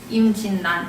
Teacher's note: 이건 어떻게 하냐면 그냥 암기를 해야 되는 건데 이게 생각해보면 우리가 발음할 때 이거 발음을 임진란이라고 안 하잖아요. 이거 발음할 때 니은하고 리을이 만났지만 니은으로 발음해요. 임진란 이렇게 발음하죠.